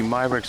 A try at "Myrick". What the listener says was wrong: Myrick has been on the show 100 times and you still can't say his name. There's no S in it.